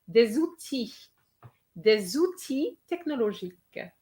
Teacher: Okay, so this one, the little trap was the word outil. Yes, there's an L, but that L is silent.